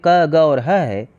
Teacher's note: क, ग और ह कंठ ध्वनियां है